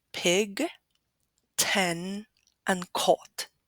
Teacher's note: And this is what we call aspiration. That is, the pronunciation of a consonant with an aha sound, or, putting it another way, with the sound of escaping air